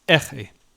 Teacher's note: notice that the stress falls on the first syllable.